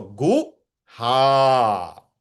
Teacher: Gu is small and ha is elongated.